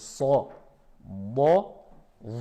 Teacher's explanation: c'est des lettres emphasées. On remplit la bouche pour les trois.